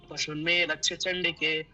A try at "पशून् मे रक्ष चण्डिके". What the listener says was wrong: अत्र दीर्घ उकारस्य उच्चारणम् अथवा दीर्घ इकारस्य उच्चारणं भवान् सम्यक् न करोति। लक्ष्मीं यथा लक्ष्मीं है ना, पशून् में एवं करोतु।